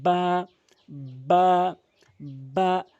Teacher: দুই ঠোট মিলিত করে এভাবে উচ্চারণ করবেন